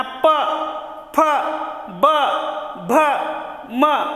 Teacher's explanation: वरचा होठ आणि खालचा होठ हे एकमेकांना स्पर्श वगैरे करतात आणि म्हणून यांना काय म्हणायचंय, ओष्ठ्य.